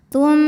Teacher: Karena nun sukun menghadapi huruf ta, maka nun sukun dibunyikan samar-samar, siap-siap menuju makhraj ta disertai dengung. Tapi dengungnya sedikit ya, karena ta makhrajnya dekat dengan nun. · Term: ikhfa aqrab